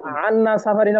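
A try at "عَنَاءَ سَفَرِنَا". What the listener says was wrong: না আনা হবে কেন? আনা উন অর্থই কষ্ট। আনা আর সাফারিনা সফরের কষ্ট, বুঝেন নাই? আনা উন আন্না না, এটা আন্না পড়বেন কেন? আনা উন আইন জবর আ, নুন আলিফ জবর আ হামজা। আনা আ সাফারিন সফরের কষ্ট।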